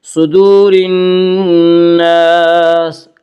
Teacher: صدور الناس، الف مدہ، الف ہمیشہ مدہ ہوتا ہے، الف سے پہلے ہمیشہ زبر ہوتا ہے، الف مدہ کو ایک الف کے برابر کھینچ کر پڑھیں گے